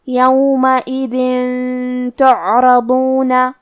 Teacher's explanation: یومئذ تعرضون، کلمت تعرضون میں حرف العین کو ہمیں ظاہر کرنا ہے، یہاں حرف الضاد ہے اور ضاد کی ادائیگی زبان کے کروٹ اور اوپر کے داڑھوں کے جڑ سے ہے، کیونکہ ضاد حروف التفخیم میں سے ہے تو ہم یہ حرف کو بھاری آواز میں اور منہ پھلا کے پڑھیں گے۔